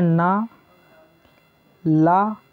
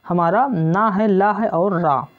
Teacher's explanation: जिन व्यंजनों के उच्चारण में जिह्वा ऊपरी मसूड़ों को स्पर्श करती है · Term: वर्त्स व्यंजन